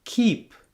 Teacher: your tongue tongue closing to block the air for C then your mouth opens only narrowly to let the air pass for the vowel e · your mouth opens only narrowly to let the air pass for the vowel E. Your mouth isn't open as wide as it was for the A in cap.